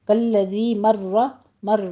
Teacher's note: کالذی مر را مفخم پڑھی جائے گی، تشدید ادا کیجیے